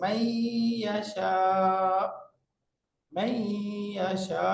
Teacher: নুনটার উচ্চারণ হবে না, ইয়ার উপরে তাসদীদ হয়ে যাবে। এখন পড়তে হবে মাই ইয়াশা, মাই ইয়াশা, এরকম হয়ে যাবে। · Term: ইদগাম